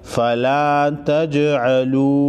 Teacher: جیم ساکن کو ہلا کر پڑھیں گے